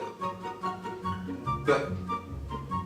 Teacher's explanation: on put your fingers on the throat and pronounce b b there is vibration so it's a voiced consonant sound